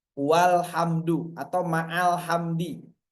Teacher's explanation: Kalau ada huruf sebelumnya atau kalimat sebelumnya, maka hilang itu hamzahnya. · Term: hamzah wasal